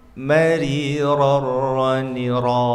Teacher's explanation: Huruf ra makhrajnya berdekatan dengan huruf nun, hanya dhahrul lisannya dimasukkan sedikit, jadi agak mundur dari huruf nun.